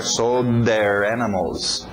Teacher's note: O D entrando no TH de there